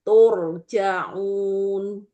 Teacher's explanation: Kemudian karena dia di akhir ayat disukun, itu bisa posisinya bisa 1 ayunan, turja'un, atau 2 ayunan, turja'un, atau 3 ayunan, turja'un. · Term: mat arid li sukun